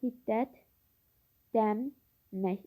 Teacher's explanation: L samiti D samitinə çevrilir. N samiti M samitinə çevrilir.